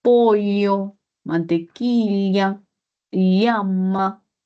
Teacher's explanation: hay ciertas zonas de Perú en la zona andina donde sí se utiliza la doble L. Ah, si se utiliza la lateral palatal que es la pollo, mantequilla y llama. · Sí se utiliza la lateral palatal